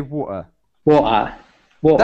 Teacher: say it without the T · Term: British accent